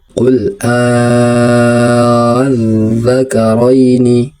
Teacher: Mad farqi dibaca sepanjang 6 harokat atau 6 ketukan.